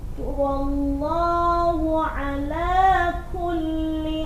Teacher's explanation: Lamnya ada tasydid jadi harus ditekan.